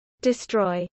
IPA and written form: dɪsˈtɹɔɪ (destroy)